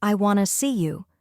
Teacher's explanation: the word to is often pronounced like t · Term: weak sounds